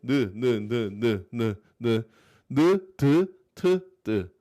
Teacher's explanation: 혀끝이 위에 붙는 모양에서 나는 소리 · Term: 니은